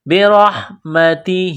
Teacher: را کو ہا کے ساتھ ملانا ہے، را کو موٹا کرنا ہے · ہا کے ساتھ ملانا ہے، را کو موٹا کرنا ہے، برحمتہ، تا کو باریک کرنا ہے، ہا کے نیچے کڑی زیر ہے، ایک الف کے لمٹ میں کھینچنا ہے